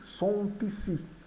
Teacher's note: Mes CD sont ici, sont ici, ocorre aqui uma ligação do T do sont com o I de ici. Então fica sont ici.